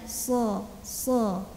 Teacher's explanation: dengan dinding gigi Sari bawah gigi Sari yang tengah dalamnya nah Shad ini kan huruf tebal jadi kita taikan lagi pangkal lidah